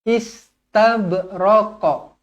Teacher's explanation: ba dibaca Qalqalah Sugra melantun